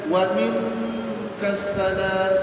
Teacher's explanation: Kita belajar Al-Quran, nun mati jumpa kaf, ikhfa, dengungkan ikhfa.